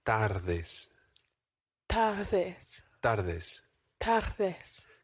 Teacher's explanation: In Spanish, the D is very rarely a hard D like in English in the words dad or donut. It's a soft D, which sounds almost like the English word the.